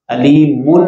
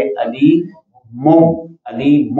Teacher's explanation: قاعدہ کہتے ہیں، اقلاب۔ اب یہاں پہ میم ساکن کے اندر جو نون ساکن کی آواز پیدا ہوگی اس تنوین میں، نون ساکن کی، اس کو میم سے بدل دیں گے